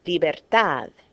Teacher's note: natural stress goes on the last syllable